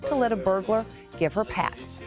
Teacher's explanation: the reporter drops the H there from the word her. Instead of give her, is giver.